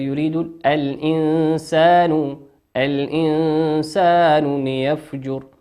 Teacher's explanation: الإنسان نون ساكن أتى بعدها حرف السين، والسين من حروف الإخفاء